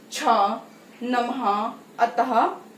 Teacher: जो विसर्ग है इसका उच्चारण हा के रूप में होता है और ये शब्द के अंत में लगता है